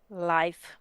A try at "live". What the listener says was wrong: Live, good job.